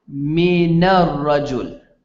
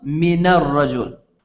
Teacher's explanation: when it's followed by a sukoon the noon takes a fatah instead of a sukoon